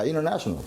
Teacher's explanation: 혀가 in 하면 벌써 위에 천장에 붙어 있어요. 트도 붙어 있어요. 그러니까 쉽게 가려고 한 번만 붙이는 거야. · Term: NT 법칙